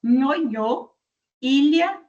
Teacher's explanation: Que na hora que nós produzimos o som, a nossa língua, a parte que é média, ou seja, o meio da nossa língua, vai se encostar mais no final do nosso palato duro, do nosso céu da boca. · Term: palatal